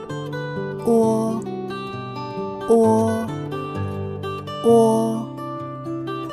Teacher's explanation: Độ mở miệng vừa phải, vị trí lưỡi hơi cao, thiên về phía sau, môi tròn. Phát âm gần giống như O của tiếng Việt.